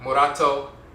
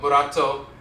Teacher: the tongue taps the roof of the mouth once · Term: rolling R